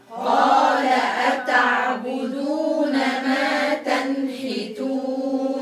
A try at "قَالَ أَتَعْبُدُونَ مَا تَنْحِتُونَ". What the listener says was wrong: الباء مضمومة ضميها كويس قال أتعبدون ما تنحتون